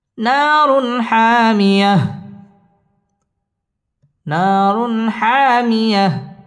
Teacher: হা ইজহারে হরফ গুন্না ছাড়া স্পষ্ট করে পড়তে হবে